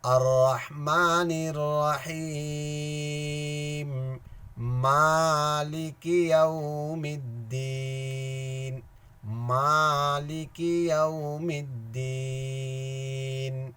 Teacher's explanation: لام الف مدہ کی آواز جو ہے نا ایک الف کے برابر ہے۔ مالک یو نہیں ہوگا، مالک یوم الدین، یہ یا مدہ ہے۔